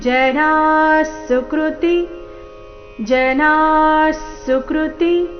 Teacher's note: ವಿಸರ್ಗದ ಉಚ್ಚಾರಣೆ ಇಲ್ಲಿ ಅರ್ಧ ಸ ರೀತಿ